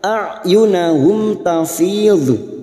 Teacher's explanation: mim sukun bertemu ta idhar safawi mim sukun dibaca jelas tanpa mendengung